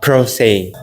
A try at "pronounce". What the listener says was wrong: You said pros. That is a different word. Let me try again more slowly. Say pro, nounce, pro, nounce. Together, pronouns.